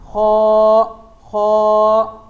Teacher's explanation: یہ نہیں کرتے جیسے کوئی چیز پھنس جائے تو اس طرح کی آوازیں نکالتے ہیں، تو یہیں سے خا ادا ہوتا ہے. حلق کے پہلے حصے سے جو منہ کی طرف ہے